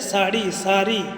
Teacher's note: ड उसके स्थान पर र का प्रयोग होता है